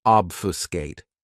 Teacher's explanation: This verb has three syllables and the stress is on that first syllable.